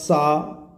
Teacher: तो इसमें हमारी स्वर तंत्रिका पासपास नहीं आएंगी तो आघोष है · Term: अघोष